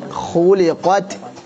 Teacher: ta ya polanya tetap T kemudian anginnya atau nafasnya bocor dengan sendiri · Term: hamas